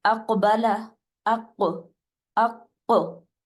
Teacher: کاف ساکن ہے جس کی وجہ سے ہم وہاں پر کلکلا کریں گے اور 2 دفعہ آپ کی ساؤنڈ آئے گی